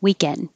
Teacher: So I don't release the D unless there's a word after it with a vowel.